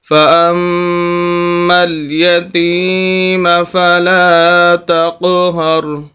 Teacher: ایک نص یہاں پر جو ایک نئی چیز ہے وہ یہ ہے کہ میم مشدد ہے، میم مشدد اور نون مشدد پر ہمیشہ غنہ ہوتا ہے۔ غنہ کہتے ہیں ناک میں آواز لے جانے کو